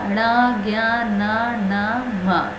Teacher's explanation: न निकल रहा है, नाक से निकल रहा है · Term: नासिका